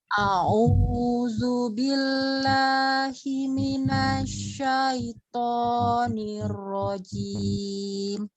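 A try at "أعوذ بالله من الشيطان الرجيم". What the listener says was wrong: Iya, diperbaiki lagi ta'awuznya, hurufnya zal, a'udzu bukan a'uzu ya. Kemudian a-nya tidak dipanjangkan, alif dari tenggorokan bawah, kemudian dua harokat ain ya, bukan au tapi alif kemudian ain. Zu ya, zal ya.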